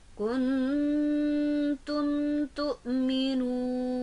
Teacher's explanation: Kuntum tu'minuna, ada mim mati bertemu huruf ta dan cara membacanya harus jelas, tidak boleh ditahan